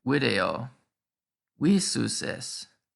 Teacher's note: the d changed to s and the vowel lengthened